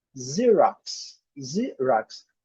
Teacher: Esse primeiro X com som de Z.